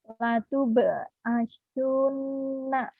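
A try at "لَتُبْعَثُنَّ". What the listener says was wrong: Kurang. Latub'atsunna. Mana gunahnya? Nun bertasdid nih ya.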